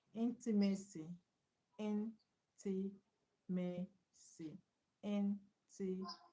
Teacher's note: So the stress is on ma.